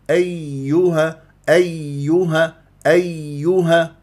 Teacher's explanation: ايها مشدده فيها نبر ولازم انا ابين اليائين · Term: الياء